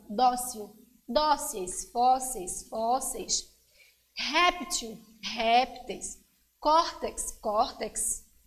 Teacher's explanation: a sílaba forte que é chamada a sílaba tônica ela é a penúltima